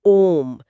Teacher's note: जब हम ओम का उच्चारण करते हैं तो ओ की ध्वनि को बहुत लंबा खींचते हैं। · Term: प्लुत